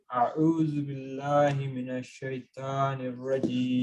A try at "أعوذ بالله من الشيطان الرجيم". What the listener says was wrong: And it's a'udhu. A'udhu. It's a dhal, not a za. A'udhu. أعوذ بالله من الشيطان الرجيم. شيطان.